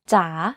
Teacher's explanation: In transliteration, we use this mark to suggest the tone, as opposed to falling tone. In rising tone, the pitch goes down first and then goes up.